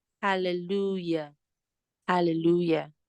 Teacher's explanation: Okay, the hallelujah, the letter J there is pronounced as Y, pronounced as the Y. Okay, and yes, it is voiced.